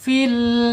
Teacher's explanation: lamnya hati-hati ya tidak boleh dipantulkan. Harus dipakai inhirabnya ya dicondongkan. Karena lam bukan ee sifat qalqalah ya. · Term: inhiraf